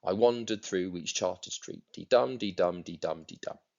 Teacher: this poem is written in iambic tetrameter, which is 4 iambs in a line